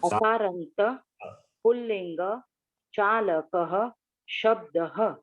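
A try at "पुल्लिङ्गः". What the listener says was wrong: You are dropping. Why do you drop? Pullingaha.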